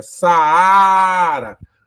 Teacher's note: a mais forte ou seja na hora de pronunciar olha Saara a segunda vogal do iato ela é a mais forte · a segunda vogal do hiato, ela é a mais forte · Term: tônica